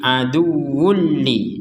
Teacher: Kita masukkan tanwin ini kepada huruf lam sehingga menjadi aduwulli. Jadi dibacanya itu wulli seperti itu. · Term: tanpa dengungan